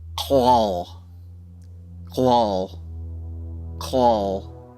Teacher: The spot in your throat that you make this noise from is about the spot where every sound of the word should be formed. It begins with a guttural k sound, which is the letter K pronounced in the gargling spot of the throat.